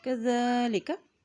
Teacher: ज़ाल के ऊपर देखिए खड़ी ज़बर एक हरकत से लंबा अदा करेंगे और ज़ाल हमेशा نرمی سے ادا کیا جاتا ہے۔